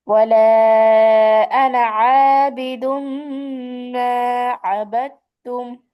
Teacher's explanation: তবে আনা শব্দ লম্বা করে পড়া যাবে না আনা দমিরের ক্ষেত্রে, হ্যাঁ। হামজা জবর আ, নুন আলিফ জবর না, টান হওয়ার কথা ছিল কিন্তু এক আলিফ। · এখানে কিন্তু আনা টান দেই নাই, যদিও টান হওয়ার কথা ছিল। তাহলে আনা জমির যেখানে আসবে পবিত্র কোরআনুল কারিমে আমরা এটা টান না দিয়ে পড়বো।